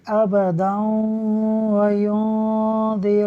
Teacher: ناظرین یہاں ایک قاعدہ لگ رہا تھا، دال کے اوپر دو زبر کی تنوین ہے، دو زبر کی تنوین کے بعد واو حروف یرملون میں سے ہے، لہٰذا ادغام ہوگا، یعنی ہم غنہ کر کے پڑھیں گے